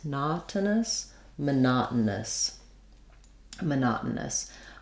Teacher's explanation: now we're going to be stressing on the second syllable so that's where our letter O says the a sound again